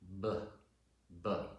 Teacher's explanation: It's just air, it's white noise. Whereas B, to make the consonant sound for the letter B, you actually have to make a vocal sound. Your vocal cords vibrate, and you could feel that if you put your hand in B. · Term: voiced